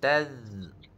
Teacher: Huruf za ni dia berada hujung lidah. Makhraj dia, tempat keluar dia hujung lidah.